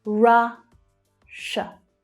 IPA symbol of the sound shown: ʃ